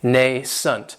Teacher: this word has two syllables and the stress is on that first syllable it has the long a sound